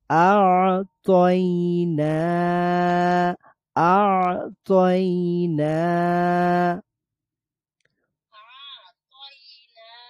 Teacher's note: sound একবারে থামিয়ে দিচ্ছি না, আবার জারিও রাখছি না, কারণ আইন হচ্ছে বাইয়িনার হরফ